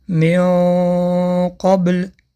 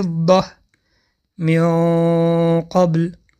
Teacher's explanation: مثال حرف قاف حرف قف استعلا است و هنگام تلفظ اخفا که بعد از حرف نون حرف استعلا می‌آید اخفا کمی غفستر تلفظ کرده می‌شود